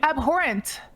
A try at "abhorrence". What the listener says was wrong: You said it wrong. You said abhorrent, not abhorrence. said it wrong.